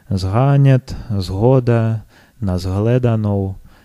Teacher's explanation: что еще характерно для моравских диалектов, это озвончение группы «с», «г». Нас на курсах учат, что хотя пишется «с», «г», но произносится это как «с», «х».